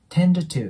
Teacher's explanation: この▁tend▁の▁d、▁これも破裂音になるので、次に母音が来ないときは音が消えます